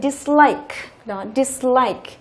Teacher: Thì khi mà chúng ta thêm tiền tố này vào đằng trước thì trọng âm chính của cái từ này nó không thay đổi. Nó rơi vào cái like.